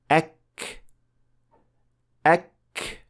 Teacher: To produce the Arabic kaf, it is almost the same movement made for qaf. So the back of the tongue is raised to touch the area between the soft palate and the hard palate.